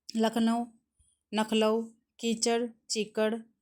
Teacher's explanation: एक शब्द की विभिन्न ध्वनियों के विपर्य की प्रवृत्ति दखनी की एक प्रमुख विशेषता है